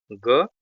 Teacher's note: ग सघोष अल्प प्राण है।